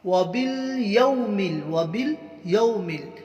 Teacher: وَبِالْيَوْمِ، وَبِالْيَوْمِ، یا واو زبر، یا واو لین ہے، اس لیے نرم آواز سے جلد پڑھیں گے